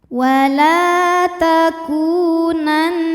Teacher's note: ya atau Nun musyaddadah sebab Nun ada tasdidnya cara membacanya adalah Nun didengungkan ditahan dengungannya kurang lebih dua harakat ya jadi bunyi n tahan sampai ada suara masuk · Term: gunah musyaddadah